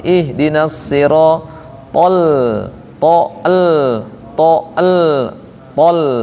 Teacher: To-nya tebal, lamnya tipis.